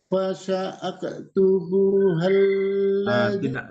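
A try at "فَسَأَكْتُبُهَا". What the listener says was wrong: Tidak pakai hal. Jadi hanya hidup.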